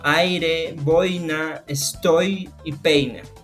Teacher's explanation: se caracteriza por iniciar con una vocal abierta y terminar con una vocal cerrada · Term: diptongo decreciente